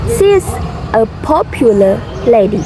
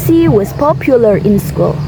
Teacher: if the next word start with the vowel sound, so we insert the r sound